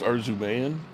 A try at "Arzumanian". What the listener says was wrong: Arzumanian is how it was. There's an extra AN that I never realized was there when I was told his name originally.